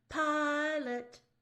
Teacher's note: So even though it is, LOT would be a perfect doubling situation, we don't apply the rule because the pi is the more important syllable. It's the louder, the stress side.